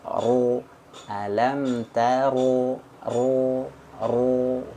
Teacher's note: huruf ro itu dia ketika berharakat fathah dia bulat ya dia berat bunyinya bergema